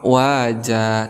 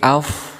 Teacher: sedangkan fa ini termasuk huruf hamz, maka ada angin yang keluar